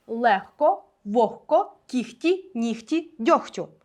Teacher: Лише п'ять слів Де г перетворюється на Х